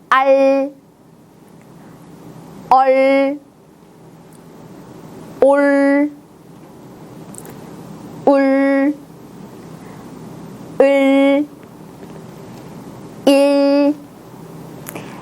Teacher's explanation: 받침에 올 때는 우리가 공부했던 울퉁불퉁한 잇몸이 아니고 그것보다 조금 더 안쪽, 딱딱하고 넓은 입천장으로 혀가 올라갑니다. 여러분이 원래 발음하던 르 자음보다 조금 더 뒤쪽으로 혀를 말아보겠습니다. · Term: 받침 을